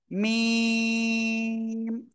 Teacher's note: মিম অক্ষরটা তাহলে কোন জায়গা থেকে উচ্চারণ করতে হবে দুই ঠোট এর বাইরের অংশ মি চার আলিফ টানে উচ্চারণ করতে হবে।